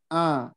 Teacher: banyak orang yang mengucapkan ain itu bukan tengah tenggorokan, tapi seperti hamzah a hanya ke hidung.